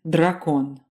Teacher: A D articulated with the tip of your tongue against your front teeth.